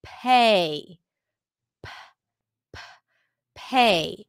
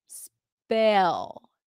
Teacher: the p at the beginning of words is aspirated so it feels like there is a little h right after it